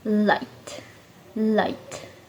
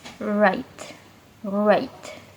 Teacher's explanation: L is a lateral alveolar approximant, while R is an alveolar approximant. L lets air pass the sides of the tongue. R uses the tip of the tongue curled back.